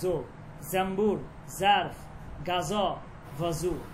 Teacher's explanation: কিন্তু ফার্সিতে জ জা জত জাল উচ্চারণ সেম হবে, জেটের উচ্চারণ, যেমন জো জাম্বুর জারফ গাজ ভাজু।